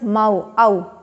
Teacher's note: तो ये हो गए दो वॉवल्स के मिलने से एक और साउंड प्रोड्यूस हो रहा है